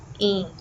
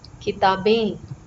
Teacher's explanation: It has the A sound nasalized.